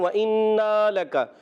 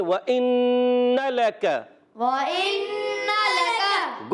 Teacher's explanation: اور یہاں نون مشدد ہے، نون پر تشدید جب آ جائے یا میم پر تشدید آ جائے ہمیشہ اس میں ایک الف کا وہاں پر غنہ ہوتا ہے، ہمیشہ وہاں پر ایک الف کا غنہ کرتے ہیں، نون مشدد یا میم مشدد ہو، یا نون مشدد ایک الف کا غنہ کرنا ہے۔ نون پر زبر ہے مگر اس کے زبر کو کھینچنا نہیں، بعض بچے کھینچ دیتے ہیں وَإِنَّ لَكَ، غلط، ہم پڑھیں گے وَإِنَّ لَكَ، وَإِنَّ لَكَ۔